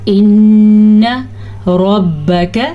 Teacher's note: ان ربک را کو پر پڑھنا ہے لیکن نہ تو با کی زبر کو لمبا کرنا ہے اور نہ ہی کاف کی زبر کو لمبا کرنا ہے۔